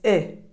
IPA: ɪ